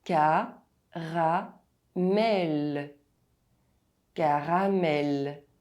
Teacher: The volume does not change from one syllable to the other, and the vowels don't lose their full sound. As you can see, the two A's are pronounced exactly the same in French.